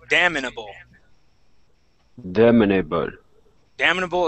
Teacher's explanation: we're going to stick an I right between the M and the N